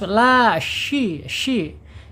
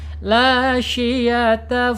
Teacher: Ah di sini yang sering orang lupa ya tapasyi. Tapasyi itu apa? Menyebar. Menyebar dia udaranya di dalam rongga mulut kita ya.